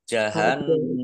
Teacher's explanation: nun tasdid bacaan gunnah atau dibaca mendengung biar tampak dengungannya maka ditahan